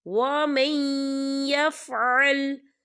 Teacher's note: یا جو ہے حروف یرملن میں سے ہے تو یہاں پر ادغام ہوگا تھوڑا سا غننے کے ساتھ